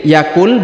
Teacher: huruf nun sukunnya dileburkan masuk ke huruf lam berharakat tasdid ini ditahan dan ditekan ya dan Nun sukunnya sudah menghilang jadi tidak dibaca lagi karena